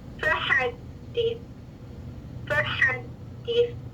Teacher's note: یہ دی والی ساؤنڈ ہے، یہ دے نہیں ہے · دال مشدد کا پہلا دال ساکن آواز مخرج پہ بند ہو رہی ہے، پھر متحرک دال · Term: مجہول نہیں معروف